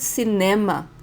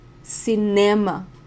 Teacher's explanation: The stronger syllable is ne, cinema.